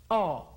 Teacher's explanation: Otra vez pónganse la punta del dedo en la lengua, O, y digan la letra O, y van a ver ustedes que se mueve la lengua para atrás.